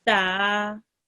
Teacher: a ta with a vertical fatha will be pronounced 2 seconds long.